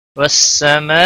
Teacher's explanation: بڑی مد ہے، مد متصل 5 الف کے برابر کھینچ کر پڑھیں گے